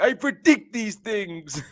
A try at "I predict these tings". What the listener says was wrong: I predict these tings. You gotta say tings on the end because Irish people don't pronounce.